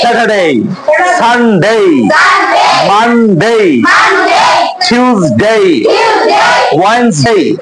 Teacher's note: আর এর পরে যদি কনসোনেন্ট থাকে তাহলে ওই আর এর উচ্চারণ হয় না